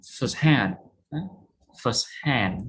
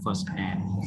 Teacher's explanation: stress on the last syllable